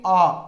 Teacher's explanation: इसके साथ ही विव्रत स्वर, जिन स्वरों का उच्चारण करते समय मुख पूर्ण रूप से खुला हो, जैसे आपके आ, ये विव्रत स्वर कहलाते हैं।